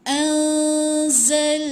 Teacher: Zai bunyi ada bunyi berdesir tu zai. Bunyikan desir tu. Ni zai bukan zal.